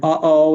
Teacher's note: it's that sudden quick stop in the middle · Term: glottal stop